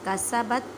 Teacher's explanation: با ساکن ہے اس وجہ سے یہاں پہ کلکلا کریں۔ کلکلا کا مطلب ہے ہلا کر پڑھنا۔